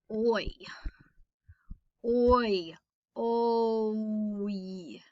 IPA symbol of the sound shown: oi